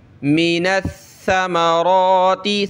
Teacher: گا، ثا پہ ہم نے تشدید کرنی ہے، سختی کرنی ہے، را کھڑا زبر ایک الف کی لمٹ میں کھینچیں گے ، ٹھیک ہے، مِنَ الثَّمَرَاتِ، ثا پہ جو ہے زبان نکالتے · یہ نون جو ہے ثا کے ساتھ ملے گا، ثا پہ ہم نے تشدید کرنی ہے، سختی کرنی ہے